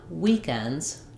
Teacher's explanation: Notice on weekends, just the week is the stressed part. So it has 2 syllables and words typically have 1 stressed syllable.